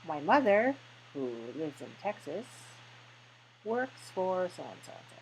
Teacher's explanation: when we say it in spoken English, we change the tone to be lower